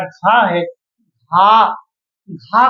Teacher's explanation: वायु तीव्र वेग से बाहर को आ रही है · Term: महाप्राण